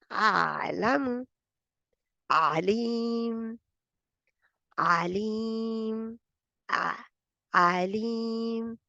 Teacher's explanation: आइन का वस्तुल हल्क, और दरमियाना हिट इसकी तवसत की सिफत आ गई, ठीक है। पार्शली रन, पार्शली रुकती है आवाज।